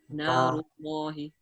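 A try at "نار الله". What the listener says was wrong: Narullahi. When I say na, I don't say no. I say na. Because noon, this letter, is always with the state. It's not from this list. It's not from this list. So it's always thin. So I say narullahi.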